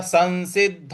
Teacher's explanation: स के ऊपर जो अनुस्वार है उसके आगे फिर दोबारा स लिखा है तो इस अनुस्वार का न में उच्चारण ले आएंगे तो हो जाएगा संसिद्ध और जो द है उस पर हमको